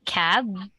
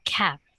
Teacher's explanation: What's different here is one is voiced, one is unvoiced.